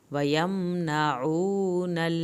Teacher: आइन को हल्क से पढ़ें, वाव साकिन को खींचे